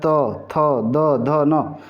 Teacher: त वर्ग जो है आपका दंत दांतों की मदद से उच्चारण होता है त थ द ध न तो दंत व्यंजन इनको कहा जाता